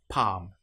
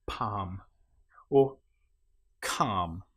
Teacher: In this case, the L you will notice is not pronounced at all.